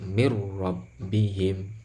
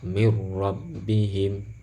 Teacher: Sempurnanya gimana? Sempurnanya nun sukun itu seolah-olah tidak ada. Dia langsung masuk semuanya kepada huruf ro. Makanya ini kalau dibaca seolah-olah nunnya nggak ada. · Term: idgham bila gunnah